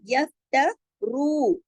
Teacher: रू मोटा भी और 2 हरकत खींचेगा